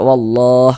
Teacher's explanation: Jadi kalau kita baca Al-Qur'an nih bertemu lafaz Allah sebelum lafaz Allah sebelah sininya ada ini nih ada harakat fathah tanda baca fathah. Maka lafaz Allah dibaca tebal, dibaca tafkhim. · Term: dibaca tabkhim